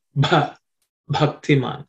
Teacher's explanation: that bha also you have to pay attention to, because it's an aspirated consonant.